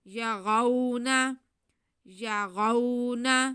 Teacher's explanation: را پہ زبر ہے، را کو ہم پر پڑھیں گے اور کھینچیں گے بالکل بھی نہیں